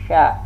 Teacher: sya ini sama dengan ya makhrajnya, tengah lidah bertentangan dengan langit-langit atas. Dan sya ini pun juga termasuk rakhawah, dia berlalu.